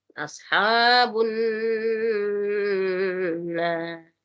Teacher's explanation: Faulaika ashabun nar. Nah, ini nun tasdidnya juga perlu diperjelas dan didengungkan ya. · Ashabu itu agak lembut keluarnya kayak ada angin.